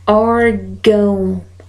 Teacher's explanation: Então, logo aqui, a palavra órgão, eu tenho a marca de nasalidade, que vai me dizer que esse A, ele deve ser pronunciado com som nasal